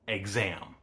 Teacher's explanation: Because the X in exam occurs in between two vowels, the voicing from the vowels bleeds over into the X, which in phenology we call assimilation.